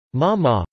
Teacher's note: Ma ma, falling then rising, means horse